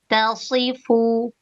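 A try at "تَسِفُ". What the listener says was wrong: Tak-nya tipiskan lagi. Tasi.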